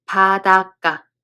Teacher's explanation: the following consonant becomes tensed